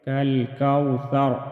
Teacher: وقف کی صورت میں را ساکن ہوگا اور را کو موٹا ادا کریں گے